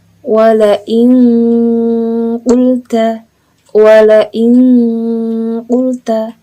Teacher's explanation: Bacaan ikhfa ab'ad ini sendiri biasanya akan mengarah kepada bunyi eng. Ya, kalau aqrab tadi mengarah pada bunyi n, kemudian kalau ab'ad ini mengarah pada bunyi eng.